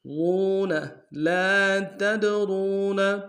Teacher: واو مدہ ایک مقدار میں کھینچیں گے